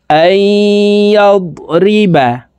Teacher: নুন সাকিনের পরে ইদগামে বা গুন্নার হরফ ইয়া আসছে, এই কারণে এই হামজা তাসদিদওয়ালা ইয়ার সাথে গুন্নার সহিত মিলাইয়া পড়তে হবে